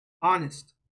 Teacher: we don't say the H sound